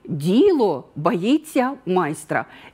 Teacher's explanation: І у відповіді я виділяю голосом слово «діло». Тобто звертаю увагу, що саме діло боїться майстра. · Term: логічний наголос